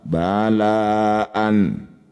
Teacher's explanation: Disebut bacaan mad wajib muttasil. Cara bacanya la yang bertanda layar dipanjangkan 6 harokat.